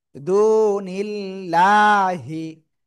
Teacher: পেশের বামে জসমলা ওয়াও, নুন লাম জের নীল, দু নীল, লাম খাড়া জবর লা। এই যে আল্লাহ শব্দের লামের ডান পাশে জের, এজন্য চিকুন করে পড়বো লয় আকারে লা।